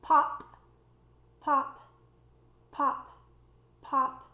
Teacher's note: if you say a consonant that is voiceless, for example, the P sound, pop, pop, pop, pop, you should not feel much vibration